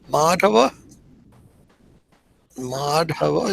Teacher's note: You see where the line over the A is? That should be pronounced a little longer.